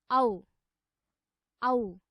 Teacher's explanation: औ वर्णस्य उच्चारणे अपि कण्ठ ओष्ठौ एव अधिकौ सक्रियौ भवतः। अतः औ वर्णस्य उच्चारणस्थानं कण्ठ ओष्ठौ स्तः।